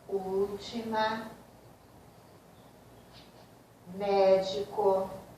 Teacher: É a palavra cujo acento tônico, cuja sílaba tônica está na antepenúltima sílaba. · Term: proparoxítonas